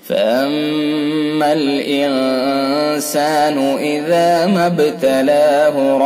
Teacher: میم مشدد لہذا حرف غنہ ہوگا، ایک الف کے برابر ناک میں آواز لے جائیں گے